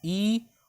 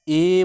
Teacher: समृद्ध स्वर में क्या हो रहा है, मुंह बहुत कम खुलता था, पर अर्ध समृद्ध में क्या हो रहा है, मुंह थोड़ा इससे ज्यादा खुलने लगता है